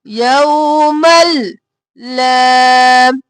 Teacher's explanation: ادغام بلا گنہ، میم کو لام میں مدغم کیا بغیر گنہ کے